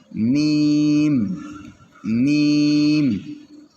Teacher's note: দুই ঠোঁট হইতে বা মিম উচ্চারিত হয় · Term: 15 নাম্বার মাখরাজ